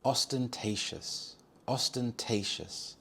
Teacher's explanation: The stress is on the third syllable te